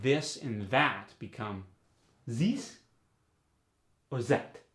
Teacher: the voiced th gets the Z sound